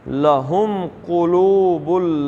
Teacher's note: قاف پہ پیش بڑے زور سے پڑھنے کا طریقہ کیا ہے؟ منہ کو گول کرنا، ہونٹوں کو۔